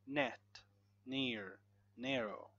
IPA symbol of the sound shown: n